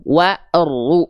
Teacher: Maka dibacanya jangan dipanjangkan ya wawunya, tapi langsung masuk ke huruf berikutnya yang ada tanda tasdid. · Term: alif lam syamsiah